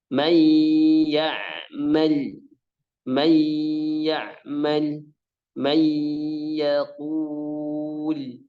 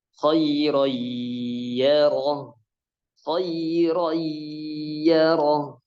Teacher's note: Tadi ya dimasukkan dengan gunnah. Apabila nun sukun atau tanwin bertemu dengan huruf idgham yang 4, ya, nun, mim, waw, maka cara bacanya dimasukkan dengan gunnah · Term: idgham bi gunnah